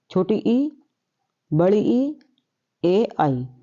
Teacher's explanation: ये फ्रेंड्स जीभ के हमारे अगले भाग से बोले जाते हैं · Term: अग्र स्वर